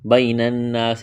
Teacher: بین الناس، یا لین ہے، کھینچنا نہیں ہے، نون مشدد ہے، غنہ کریں گے، آواز ناک میں چھپائیں گے، الف مدہ ہے، وقف کریں گے، سین کو ساکن کریں گے۔